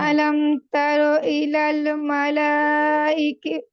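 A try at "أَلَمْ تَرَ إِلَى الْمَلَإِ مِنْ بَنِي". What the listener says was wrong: আপু মাদ নাই ইলাল মালা মিম বানি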